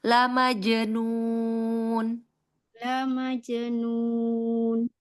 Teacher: Hati-hati jimnya jangan terkecap ce.